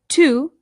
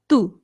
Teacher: The T in Spanish is much like the D. It's softer than it is in English. So this is not to, it's to. · you can make the softer T by bringing your tongue right up behind your teeth instead of through your teeth